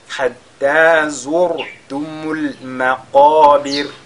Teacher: Et al-maqabir, la lettre Qaf qui est avec at-tafkhim, c'est pas maqabir, mais maqabir.